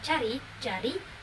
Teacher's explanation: konsonan hambat palatal pula mencakup huruf cah dan Jah